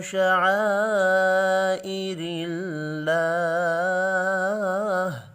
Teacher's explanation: اللہ کا نام بھی زیر کی وجہ سے باریک پڑھیں گے، وف کی صورت میں ہا ساکن پڑھا جائے گا۔